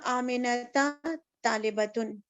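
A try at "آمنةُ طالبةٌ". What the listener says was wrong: آمینہ تا ہو جائے گا, تو سے تا ہو جائے گا, ایک پیش تھی تو ایک زبر.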